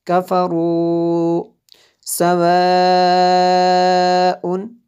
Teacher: یہاں پہ مد متصل ہے، حمزہ اسی کلمے میں ہے